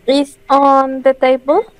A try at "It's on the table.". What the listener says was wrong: It's, que suena esa T. It's.